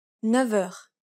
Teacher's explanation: The F takes on a V sound.